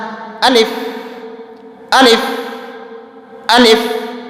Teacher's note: الف کھینچ کر بالکل نہیں پڑھنا ہے۔ یہ تھا الف کا مخرج جوف اقصائے حلق۔